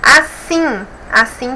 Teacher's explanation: também é a última sílaba que é mais forte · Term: oxítono